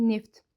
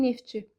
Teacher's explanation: Əgər ki, sözdə samitlə başlayan şəkilçi və ya söz gələrsə, bu zaman sondakı t düşəcək. Məsələn, deyək ki, neftçi.